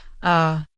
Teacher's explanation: In natural fast speech, many vowels get reduced to a sound called the schwa. The schwa is that soft, weak, lazy little sound